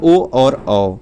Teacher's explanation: इसका उच्चारण स्थान होता है कंठ और ओष्ठ से होता है। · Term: कंठोष्ठ